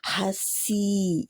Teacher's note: आगे अपने मुंह के हाथ रखें तो फील कर सकेंगे हवा को। हसी, सी की आवाज़ सीटी वाली है